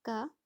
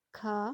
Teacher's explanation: जब हम क बोल रहे हैं तो थोड़ा कम वायु निकल रही है, लेकिन जब ख बोल रहे हैं तो ज़्यादा वायु निकल रही है